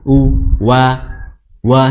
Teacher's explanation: huruf waw makhrajnya adalah di kedua bibir disertai dengan menyunyu atau munyu ya, maju ya.